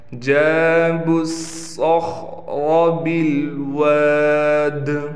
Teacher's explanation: صاد کو موٹا بھی کرنا ہے، صاد میں سیٹی بھی نکالنی ہے اور خا کو ہم نے مخرج سے نکال کر موٹا کرنا ہے. را بھی یہاں پر موٹا پڑھا جائے گا.